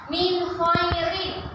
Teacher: jelas tidak boleh mendengung